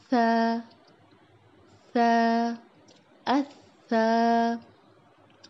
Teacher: جو ہماری زبان کی نوک ہے ہمارے اوپر کے جو 2 دانت ہیں اس کے سرے کو ٹچ کرے گی تو یہ نرمی سے ادا ہوگا سا سا سا.